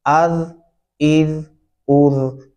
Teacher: आपने बहुत जन में रखना है कि इसको अज इज उज जा की आवाज आपने कतन यहां पर नहीं डालनी अज इज उज नरमी से अदा करेंगे